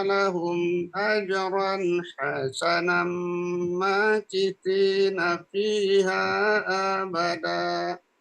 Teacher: Idgham dileburkan dengan dengung bi gunnah dengan dengung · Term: idgham bi gunnah